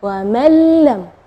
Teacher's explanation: idgham bila gunnah, tidak ada dengung ya